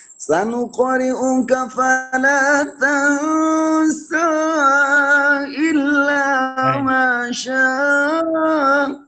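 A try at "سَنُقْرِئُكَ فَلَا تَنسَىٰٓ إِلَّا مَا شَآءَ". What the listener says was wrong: آپ نے مد اصلی آپ تو زیادہ کر دی ہے. یہ دیکھو اوپر مد پڑی ہوئی، پھر یہ مد پڑی ہوئی ہے نا. یہ جو سائن ہے نا، اس سائن میں اور اس سائن میں آپ غور کریں، دونوں میں فرق ہے نا. یہ سائن ہوتا ہے مد منفصل کا، اچھا، اور یہ سائن ہوتا ہے مد متصل کا. یہ سائن مد منفصل کو جائز بھی کہتے ہیں اور مد متصل کو واجب کہتے ہیں.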